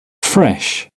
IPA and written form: frɛʃ (fresh)